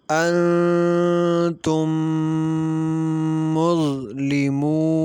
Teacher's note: میم ساکن کے بعد دوسری میم آ جائے تو ادغام شفوی ہوگا، یعنی میم ساکن میں غنہ کر کے پڑھیں گے